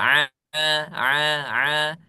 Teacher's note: Jadi antara langit-langit dengan lidah itu ada ada ruang itu disebut dengan infitah